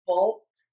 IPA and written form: boʊlt (BOLT)